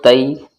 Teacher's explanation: زبان کی نوک کو اوپر کے جو ہمارے دو دانت ہیں ان کی جڑ میں لگاؤ، تا نکل جائے گا